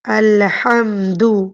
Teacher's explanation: ہا وسط حلق سے نکلے گی